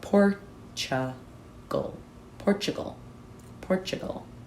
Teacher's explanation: that t is gonna sound more ch